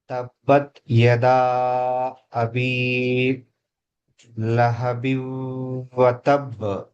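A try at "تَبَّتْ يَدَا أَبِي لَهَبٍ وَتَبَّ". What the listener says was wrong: ఎంత మార్పు వచ్చింది మీరు చదవటంలో.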